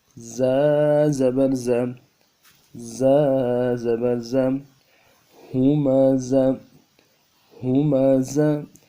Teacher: دونوں دانتوں کو ملائیں گے، زور دیں گے، ان کے بیچ میں سے آواز نکلے گی سٹی کی۔